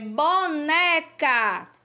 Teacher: A sílaba né, a gente pronuncia com mais tonicidade. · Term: paroxítona